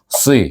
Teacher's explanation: dengan asli na itu kemudan baru kita sebut si baris bawah sad itu tebal sikit bunyinya walaupun di baris bawah